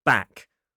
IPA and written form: bæk (back)